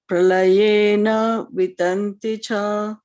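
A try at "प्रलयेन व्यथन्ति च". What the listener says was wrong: Pralayena vyathanti cha. Vya, it is vya. Va and ya. Vyathanti cha.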